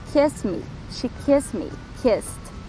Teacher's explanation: Não produz vibração na garganta. Então, no passado, vamos pronunciar esse ED com som de T.